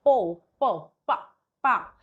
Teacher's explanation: I am using my lips here, and it is plosive